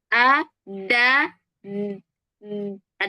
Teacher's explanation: Dalnya jangan langsung dilepas, tapi dia harus menyentuhnya itu agak kencang dulu. A, da, ada gitunya dulu.